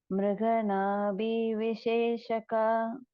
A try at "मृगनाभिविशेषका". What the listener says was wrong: In Mruganabhi, it's a short vowel which comes along with bha. Okay.